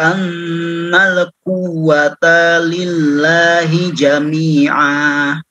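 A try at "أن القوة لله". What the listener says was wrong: Annal quwwata lillah. Quwwata ta kelam pendek. Ulang lagi.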